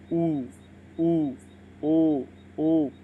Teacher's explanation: ये स्वर बोलते समय हमारी जीभ पीछे की ओर जा रही है